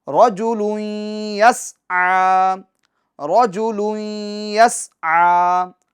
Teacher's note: عین اس پر کھڑی حرکات ہے، اس کو ہم ایک الف کی مقدار پڑھیں گے